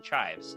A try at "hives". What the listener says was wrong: Chives, what you put on the potato? No C. Hives.